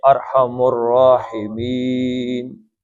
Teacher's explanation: راحمین می بھی 2 تھی، مد اصلی تھا لیکن نون عارضی طور پہ آیت رکنے کی وجہ سے ساکن ہوا، تو آپ اس کو 5 حرکتیں پڑھیں گے